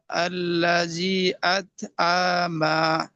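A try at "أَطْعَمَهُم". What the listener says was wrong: আইন টান হবে না, আত আমা।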